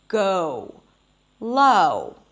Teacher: I'm starting open and then I'm closing my lips gradually as I'm pronouncing the sound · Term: O as in go